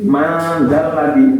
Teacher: Man nggak boleh dibaca jelas, harus disamarkan. Seakan-akan mau mengucapkan dal. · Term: ikhfa